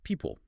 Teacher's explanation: That second syllable often reduces to a schwa or something very close.